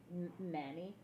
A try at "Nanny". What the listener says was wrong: Nanny. It's not how you say it. Nanny. Name. Nanny. There's an E at the end. You should say the E, not how you say it. I'm telling you, that's how she says it.